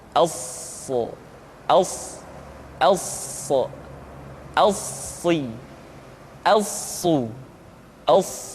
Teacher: sifat as-safir yang dimiliki oleh huruf sha, yaitu suara tambahan yang terdengar menyerupai dengan suara angsa